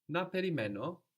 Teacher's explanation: if you say with a question tone to your voice naimo this in Greek is understood as shall I wait